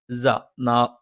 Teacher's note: സ നാവിന്റെ കൂർത്താറ്റത്തിന്റെ മുകൾഭാഗം രണ്ടുവരി മുൻപല്ലുകൾക്കിടയിൽ പിന്നിലായിട്ട് വെക്കണം